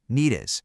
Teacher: And the D at the end of need links right into is and softens.